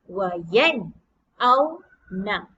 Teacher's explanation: Kita sebutkan huruf nun, kemudian kita sebutkan huruf hamzah yang berada di sebelah nun dengan jelas dan nyata. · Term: izhar halqi